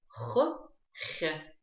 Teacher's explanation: эта буква образует звук от согласного Х путем смягчения, и губы растягиваются как при улыбке